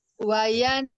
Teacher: Ainnya pendek, hi yang panjang